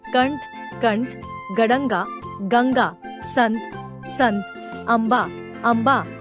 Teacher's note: अनुस्वार के उच्चारण में हवा केवल नाक से निकलती है।